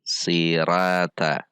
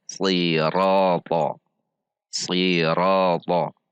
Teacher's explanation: Jika kita baca dengan melemaskan pangkal lidah atau istifal, maka akan berbunyi sirata. Jika kita tegangkan sirata. Sirata. Itu perbedaannya istifal dengan isti'la.